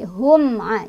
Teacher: Hum'a di sini ada izhar syafawi sebabnya karena ada mim sukun bertemu dengan huruf izhar syafawi yaitu ain. Cara bacanya mim sukunnya dibaca jelas sesuai dengan tempat keluar hurufnya